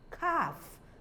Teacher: the L is not pronounced so it takes a longer R sound calf likewise chalk likewise